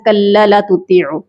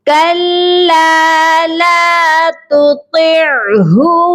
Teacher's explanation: لام کو دونوں کو ہم نے لمبا کر کے پڑھنا ہے کیونکہ دونوں الف مدہ کے ساتھ ہیں۔